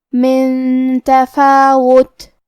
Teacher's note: یہاں حکم ہے اخفاء لہذا ہمیں یہ حکم کو غنہ کے ساتھ ادا کرنا ہے